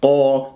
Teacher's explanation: قا مفخم، قاف من حرف الاستعلاء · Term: أحرف الاستعلاء